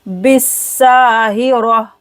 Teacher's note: बा सीन के साथ मिलेगा, दोनों खाली लेटर नहीं पढ़ा जाएगा। बा सीन जेर बिस, सीन अलिफ जबर सा, बिस्साहिरा।